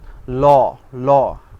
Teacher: আচ্ছা, এরপরে আসে পার্শ্বিক ধ্বনি। পার্শ্বিক ধ্বনিটি হচ্ছে ল ধ্বনিটি উচ্চারণের সময় জিহ্বার অগ্রভাগ দন্তমূলে ঠেকিয়ে রাখা হয় দন্তমূলে। আমরা যখন লটাকে উচ্চারণ করি তখন ল ল আপনি যদি এই জিহ্বাটাকে দন্তের সাথে যদি স্পর্শ না করেন তাহলে কিন্তু আপনি লটা উচ্চারণ করতে পারবেন না। · আমরা যখন লটাকে উচ্চারণ করি তখন ল ল আপনি যদি এই জিহ্বাটাকে দন্তের সাথে যদি স্পর্শ না করেন তাহলে কিন্তু আপনি লটা উচ্চারণ করতে পারবেন না। আপনি হা করে এভাবে কোনো সময় লটাকে উচ্চারণ করতে পারবেন না।